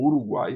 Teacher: Veja que esse gu aqui é considerado como sendo uma essa consoante complexa representa a consoante velar arredondada ou labializada